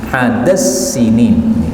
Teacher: Dal ketemu Sin ini boleh idgham jadinya gimana Dal yang pertama Dal yang kedua diubah menjadi Sin